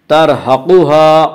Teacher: قاف کو پر پڑھیں گے، قاف حروف مستعلیہ میں سے ہے،